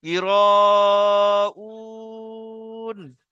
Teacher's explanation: এখানে হরফে মাদ্দার পরে হামজা প্রথম শব্দে এসছে, তাহলে মধ্যে মুত্তাসিল। মধ্যে মুত্তাসিলকে 2 থেকে 3 আলিফ পরিমাণ টানতে হবে।